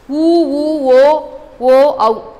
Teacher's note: இதெல்லாம் சொல்லும்போது உங்கள் உதடு குவிகிறத உங்களால் ஃபீல் பண்ண முடியும். ஸோ இது எல்லாமே இதழ்கள் குவிப்பதால். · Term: இதழ்கள் குவிதல்